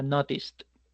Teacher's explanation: El verbo notice no genera vibración, por eso el pasado se llamará noticed.